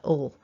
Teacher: that dark l sound which happens at the back we almost swallow that sound